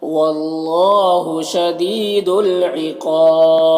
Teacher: عقاب، قاف حروف مستعلیہ میں سے ہے، پر پڑھیں گے اور یہاں پر الف مدہ ہے. یہاں پر وقف کریں گے تو با کا زیر سکون سے بدل جائے گا تو با میں قلقلہ ہوگا اور مد عارض وقفی بھی ہوگا